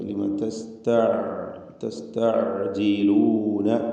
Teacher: ഐനിൻ്റെ ഉച്ചാരണം ശ്രദ്ധിക്കുക. ലിമ തസ്തഅജിലൂന, തൊണ്ടയുടെ മധ്യമാണ് ഐൻ